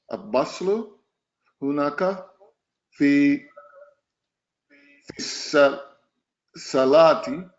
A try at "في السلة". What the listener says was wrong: السلة. Don't say سلاتي. Don't make it a mad. في السلة الصغيرة.